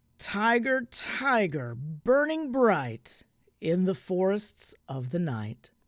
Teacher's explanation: the trochaic meter, a stressed syllable followed by an unstressed syllable